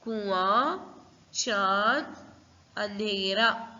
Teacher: हवा नाक में और मुंह में दोनों से भी निकलेगी, तो तब आप लोग अच्छे से समझ सकते हो कि ये अनुनासिक शब्द है।